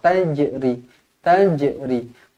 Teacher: Tajri, tajri, dibaca qalqalah sughra, dibaca melantun.